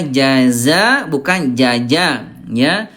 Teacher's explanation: huruf jim tengah lidah, kalau zai ujung lidah ya.